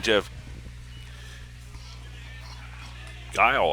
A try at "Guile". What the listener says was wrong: Jeff Guile, not Gilly.